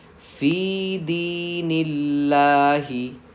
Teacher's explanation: यहाँ दीनिल्लाही में देखिए लफ्ज़ अल्लाह जिसके ऊपर लाम के ऊपर तशदीद और खड़ा ज़बर है, इससे पहले नून पे ज़ेर आ गया है, तो लाम को हम बारीक पढ़ेंगे।